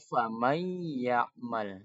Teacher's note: nunnya menjadi ya dan ditahan dengan dengung hidungnya bergetar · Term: idgham bil gunnah